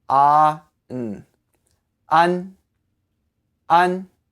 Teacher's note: You say that with a flat tone.